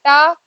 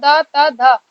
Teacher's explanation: टा, ता, धा, है ना? तो टा जो शब्द है वहां पे जीभ हमारी मुड़ गई ऊपर की तरफ